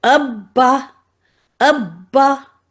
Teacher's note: और अब बा के ऊपर डब्ल्यू है तो मैं अब इसको डबल लिखूंगी। और पहला वाला बा सुकून के साथ है और दूसरा वाला बा इस हरकत के साथ है